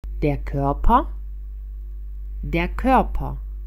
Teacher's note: pokušajte namjestiti usne na izgovor glasa O, a pokušajte izgovoriti glas E.